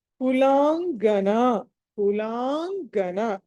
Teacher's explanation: తర్వాత కులాంగన, కులాంగన లా తర్వాత మీకు అనుస్వారము, తర్వాత గా కాబట్టి పంచమాక్షరం